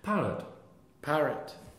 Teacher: the second syllable of a two or more syllable noun changes from the original syllable to the schwa